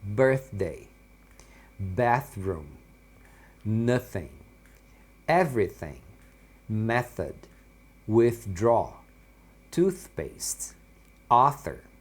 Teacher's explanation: Aqui é o mesmo som do início lá, aquele som que não tem a vibração, né? Então você faz aquele som soprado.